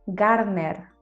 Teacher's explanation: c'est des voyelles assez ouverte parce qu'il n'y a pas de nasal